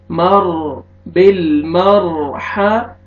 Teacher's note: را ساکن سے پہلے فتحہ آ رہا ہے، را کو پر کریں گے